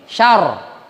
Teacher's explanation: Nah, syarri kalau kita buka hurufnya dua, ro yang pertama sukun, ro yang kedua berbaris. Maka ro yang pertama sukun sebelumnya berbaris a, sya. Maka dibaca tafkhim, syar.